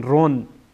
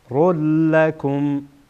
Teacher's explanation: بعد از تنوین لام آمده، لام از حروف ادغام هست، ادغام میشه. خیر رول، نمیگن رون، رول لکم.